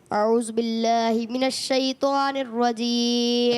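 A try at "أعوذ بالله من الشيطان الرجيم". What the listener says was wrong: اچھا یہ اعوذ باللہ نہیں پڑھیں گے، اعوذ باللہ. ذال کی ادائیگی آپ نئے آئے ہیں، ہو سکتا ہے کوئی مسئلہ نہیں، مگر سیکھیں گے تو آگے بڑھیں گے.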